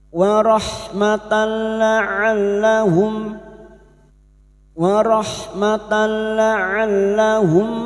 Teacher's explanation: Bertemunya nun sukun atau tanwin dengan huruf lam dan ro idgham bila guna hanya masuk tanpa mendengung.